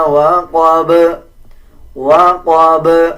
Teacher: جب وقف کیا جائے گا تو با پہ قلقلہ کیا جائے گا